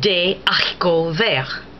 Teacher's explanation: Notice you still didn't hear the H, but what happened was you had DES, as you did in the first example, but the S did not align with the A of haricot. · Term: aspirate H